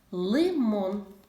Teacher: перший звук в слові лимон звук л це твердий приголосний наступний лимон звук и Це голосний лимон звук м - це